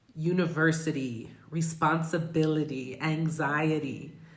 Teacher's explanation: these words where where that T is stationed between a vowel and a Y, you're going to be using that flap T